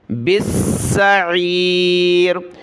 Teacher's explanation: سین کو سخت کریں گے کیونکہ تشدید ہے۔ بالسعیر، عین کو گلے سے نکالا، سعیر۔